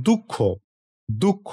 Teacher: দ এবং বিসর্গ যখন উচ্চারণ হবে তখন একটি হ ধ্বনির মত বিসর্গটা উচ্চারিত হয়। এইজন্যে বলেছে যে এর উচ্চারণ প্রায়ই পূর্ববর্তী শরীরের প্রতিধ্বনি বা একটি মৃদু হ ধ্বনির মত শোনায়। · বিসর্গ হলো একটি অঘোষ কন্ঠ ঘর্ষণজাত ধ্বনি যা সাধারণত স্বরবর্ণের পর আসে এবং শ্বাসপশ্বাসের একটি মৃদু উচ্চারণকে নির্দেশ করে এর উচ্চারণ প্রায়ই পূর্ববর্তী শরীরের প্রতিধ্বনি বা একটি মৃদু হ ধ্বনির মত শোনায় উদাহরণ দিলে বিষয়টা পরিষ্কার হবে।